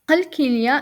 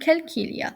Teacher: There's the conversion of the deep ka into a soft ka.